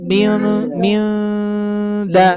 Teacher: Bukan minda, bukan ditempelkan, tapi tetap dalam keadaan ikhfa, yaitu samar-samar.